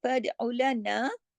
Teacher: फद दाल पे कलकला होगा